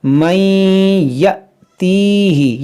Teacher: اور یہاں پر دیکھیں نون ساکن کے بعد یا ہے، یہاں پر ادغام، یہاں پہ دیکھیں الف کے اوپر جزم ہے، تو یہ الف نہیں بلکہ یہ حمزہ پڑھیں گے، اور حمزہ ساکنہ ہے تو اس میں جھٹکا دیں گے